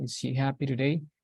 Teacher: for yes, no question, the intonation rises a little bit at the end. So it goes like, it's not a plain intonation, but it rises in the end.